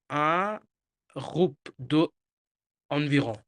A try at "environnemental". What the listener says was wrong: groupe environ, না, না, না, না। এখানে একটু কথা আছে। এখানে environmental লেখা আছে, তাই না? environmental তো environnemental কি হবে? environnemental, হ্যাঁ, environnemental, environnemental, হ্যাঁ।